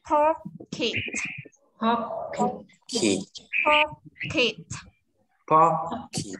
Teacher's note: Ka pi ka pi ka pi ka pi ka pi ka pi tiếp theo nhá, âm này cũng ba âm đều ra hơi, ba phụ âm đều ra hơi là pờ miệng môi này, cờ ra hơi và tờ đầu lưỡi chân răng ra hơi